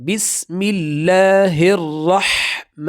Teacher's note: میم پہ کڑا زبر، اس کو زیادہ نہیں کھینچنا، 1 سیکنڈ کی مقدار پر